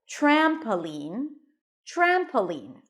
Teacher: the primary stress is on the first syllable